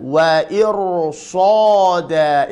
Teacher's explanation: Sebelum ra sukun adalah kasrah, akan tetapi setelah ra sukun ini adalah huruf shad maftuhah berharokat fathah, maka huruf ra dibaca tebal